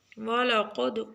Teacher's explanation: قاف موٹا دال کے اوپر کلکلا